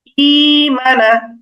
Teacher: এই জন্য মানা এটা হয়ে গেছে যে এই হামজাটার বদলে আমরা ইয়া লিখেছি ই মানা। ই মানা মাদ হয়ে গেছে, একালিফ টান হয়ে গেছে, ইয়া দিয়ে পরিবর্তন করে ফেলেছি, যে কারণে জেরের সাথে একটা দজমেলা ইয়া হয়ে গেছে এবং এখানে একালিফ মাদ হয়ে গেছে ই মানা।